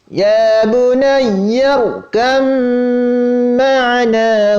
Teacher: Kecuali pada pengidghaman ba dengan mim, maka itu disertai dengan gunnah yang dipanjangkan